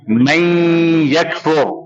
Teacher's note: نون escape ہو جائے گا، نون نہیں پڑھا جائے گا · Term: ادغام